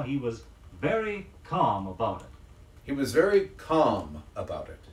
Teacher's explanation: Another of the words with an L in its spelling, which is not pronounced, is calm